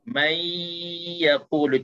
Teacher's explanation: Tapi nun seolah-olah dah dimasukkan ke dalam ya dan hilang nun itu. Hilang nun itu tapi kekalkan sifat dengung dua harakat itu. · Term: idgham